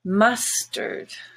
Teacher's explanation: in fact the a in mustard is a schwa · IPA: /ə/